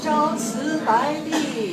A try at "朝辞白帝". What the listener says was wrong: 嗯 ， 着 急 啊 ！ 朝 辞 的 辞 是 长 音 。